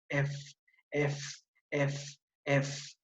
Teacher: por el punto de articulación es una consonante labio dental